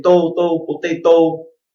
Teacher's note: its just oh and you stop before you relax your lips